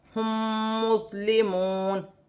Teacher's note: میم ساکن کے بعد میم مشدد آ رہی ہے، اس میں غنہ کیا جائے گا اور واو مدہ ہے، ایک الف کی مقدار کھینچ کر پڑھا جائے گا.